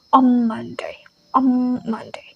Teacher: the n is changed into m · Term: assimilation